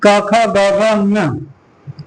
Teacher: क ख ग घ ङ इन पांचों का उच्चारण स्थान क्या होता है, कंठ।